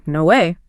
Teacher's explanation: Like if you just found out your favorite band was in town, you might say, no way. Your voice would start high and then fall, right? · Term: rise fall